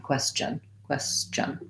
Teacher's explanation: before n so it would sound like ques question question question you can um think of this as having a little bit of a t sound but really that t is part of the ch sound